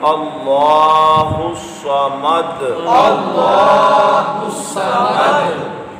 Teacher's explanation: اور صاد کو بھی آپ نے پر پڑھنا ہے کیونکہ یہ مستعلیہ حرف ہے